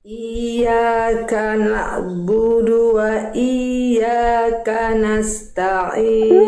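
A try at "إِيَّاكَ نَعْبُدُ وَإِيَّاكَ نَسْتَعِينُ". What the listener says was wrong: Nah Betul banget itu Bunda yang itu Bunda udah bisa Bunda teh Masyaallah lanjut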